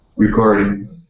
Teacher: the word is recording with the accent in the middle